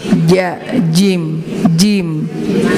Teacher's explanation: jimnya itu tengah-tengah lidah dirapatkan dengan langit-langit yang atas